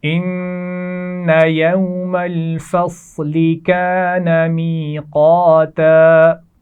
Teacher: یا مدہ اور الف مدہ، اور قاف کو موٹا پڑا جائے گا · یہ خیال رکھیے کہ فا اور لام کی آواز کو موٹا نہیں ہونا چاہیے